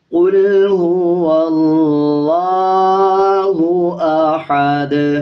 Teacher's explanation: جب وقف کریں گے تو دونوں پیش کو سائلنٹ کر دیں گے اور دال کی آواز کو آدھا پڑھا جائے گا اور قلقلہ کیا جائے گا۔